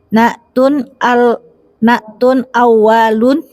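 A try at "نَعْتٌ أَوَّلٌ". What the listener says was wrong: Awwalun. Wa-nya pendek.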